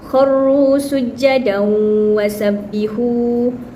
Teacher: tanwin bertemu waw yang tak ada tanda syaddah, jadi dia adalah idgham nakis. Jadi cara bacaan dia adalah kharru sujadan wasabbihu secara tidak sempurna.